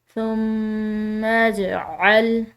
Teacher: جیم حروف قلقلہ میں سے ہے، قلقلہ کریں گے اس پر، اس کو ہلائیں گے